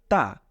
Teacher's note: জিউভার আগাটাকে আপনি আপনার মাড়ির দাঁতের উপরের সাথে লাগিয়ে দিন